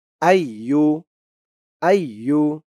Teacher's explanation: তিন আলিফ টান হবে মধ্যে মুনফাসিল এই যে মধ্যে মুনফাসিলের চিহ্ন ইয়া আইয়ু আইয়ু পরে দেখুন এই